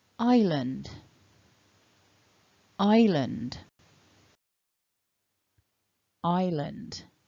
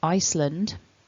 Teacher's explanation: we are not pronouncing that s that is a silent s